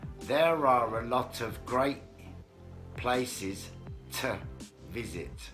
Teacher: so I need to make an R sound to connect to the next word